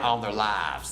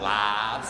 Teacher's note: Instead of lives, not a diphthong, they make it one sound.